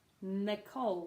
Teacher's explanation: one of the only names that has no stress on the first syllable